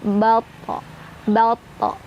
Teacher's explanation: karena to itu adalah huruf tebal, pangkal lidah kita terangkat. Jadi ini kalau mantulnya tuh kayak ke o gitu loh. Tapi nggak sengaja kita bilang o, bato, enggak. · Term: qalqalah sughra